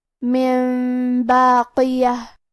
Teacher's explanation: کلمت باقیہ، با حروف القلب میں سے ہے اور قلب کا معنی ہے بدل دینا، تو ہم نون ساکن کو میم میں بدل کے اور غنہ کے ساتھ یہ حکم کو ادا کریں گے